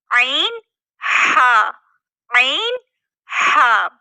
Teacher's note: आईन हा आईन हा यह दरमियानी से अदा हो ठीक है वसतु हलक यानी दरमियानी हिस्से से अदा हो रहे हैं